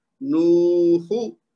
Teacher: نون واو پیش نو، ہا پیش ہو، نو ہو. ہا کو نہیں لمبا کرنا کیونکہ اس کے آگے کچھ نہیں ہے، تو نون کو لمبا کرنا ہے صرف کیونکہ اس کے بعد واو مد بن رہی ہے.